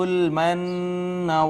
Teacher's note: نون مشدد ہے، یہاں پہ غنہ ہوگا